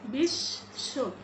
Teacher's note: আমরা ব উচ্চারণ করিনি, বরং বিশ্ব, এখানে তালব্যশটাকেই দুবার উচ্চারণ করলাম।